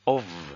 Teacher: the <f>, which we would expect to be /ff/, is actually /v/ - it's vocalized